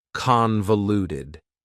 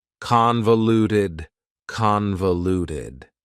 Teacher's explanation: Convoluted also has 4 syllables, and the stress is on the first syllable